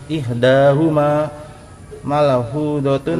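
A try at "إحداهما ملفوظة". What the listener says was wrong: Lamnya jangan diqalqalah. Pokoknya cilacapnya dihilangin. Yang mendoknya lam mim enggak ada qalqalahan. Ihdahuma malfuzatun wa hiya qum.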